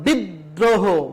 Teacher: যেমন বিদ্রোহ, এই যে দয়ের সাথে একটা রফলা রয়েছে সেই জন্য দ বর্ণটা 2 বার উচ্চারণ করা হয়েছে। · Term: দ্বিত্ব উচ্চারণ